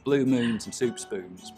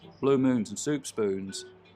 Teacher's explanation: I'll start off with very fronted goose vowels, blue moons and soup spoons, but they'll get less and less fronted the further west I go.